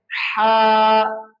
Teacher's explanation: اس ہا کو پڑھنے کا یہ طریقہ ہے کہ یہ جو گلے کا سینٹر ہے، ایک ہوتا ہے گلے کا سٹارٹ شروع، ایک ہوتا ہے سینٹر درمیان، ایک ہوتا ہے اینڈ آخر، تو گلے کے درمیان سے یہ لفظ ادا ہوتا ہے